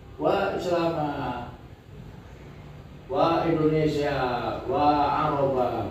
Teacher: intonasinya tinggi karena mengadu, karena merengek-rengek